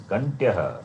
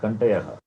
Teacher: So Kantya, conjunct. There is no vowel between them, right?